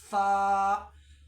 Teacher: जब हम फा बोलेंगे तो ऊपर के दांतों को नीचे के होठ में लगाएंगे